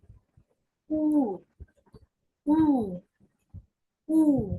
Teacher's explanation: ও উমলাউটের মতো, ঠোঁট গোল করে একটু দীর্ঘ করে উ, উ, উ। এটা যত একটু প্রেসার দিয়ে বললে ওদের মতো কাছাকাছি হয় আর কি। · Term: উ উমলাউট